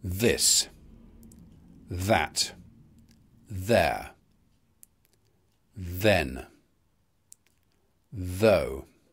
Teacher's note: Th is the voiced equivalent of th. It's dental in place, it's fricative, and the vocal folds vibrate. Th. So it's a voiced dental fricative. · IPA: /ðɪs/